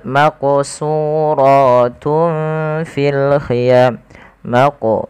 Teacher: Maqo di sini harus kita pantulkan pada lafal membaca huruf qaf